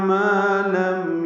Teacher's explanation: ما الف مدہ ہے، 2 حرکات لمبا ہے